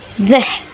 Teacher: This place is on the interdental, the tongue tip between the upper and lower teeth. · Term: dental fricatives